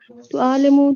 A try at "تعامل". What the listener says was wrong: انہوں نے میم پہلے کر دیا تھا عین بعد میں کر دیا تھا آپ نے لام پہلے کر دیا میم بعد میں کر دیا ہے